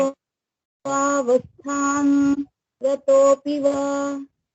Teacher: वस्थाम नहीं है, वस्थांग है, अंग है। क ख ग घ ण अंग, वस्थांग। पीछे, इसके पीछे गा है, इसलिए गा लगाइए।